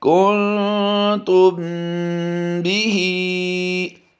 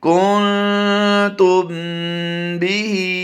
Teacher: اور یہاں پر حرف با آ گیا، میم ساکن کے بعد حرف با آ گیا تو یہاں پر ہم غنہ کریں گے